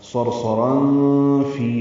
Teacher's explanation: را پر ہے کیونکہ اس پر تنوین 2 زبر کی ہے، تنوین کے بعد فا آنے کی وجہ سے اخفا ہوگا